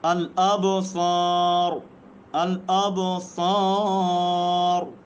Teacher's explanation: را ساکن ہے، ما قبل الف ساکن ہے، ما قبل صاد کے اوپر زبر ہے، را پور پڑ جا رہی ہے.